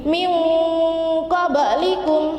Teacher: Nun sukun bertemu dengan qaf. Jadi dimasukkan ke dalam huruf qaf dan mendengung. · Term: ikhfa